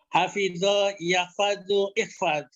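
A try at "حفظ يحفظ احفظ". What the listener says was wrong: Ahsan.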